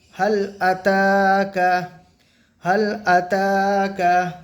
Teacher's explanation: খড়া জবর আলিফ মাদ্দার সমতুল্য, এখানে এক আলিফ টান দিয়ে পড়তে হবে